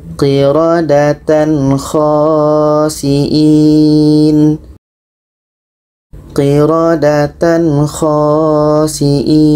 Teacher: Jadi tadi kalau tanwin atas sejajar itu tidak dengung. Bermakna tanwin bertemu kha ini tidak dengung.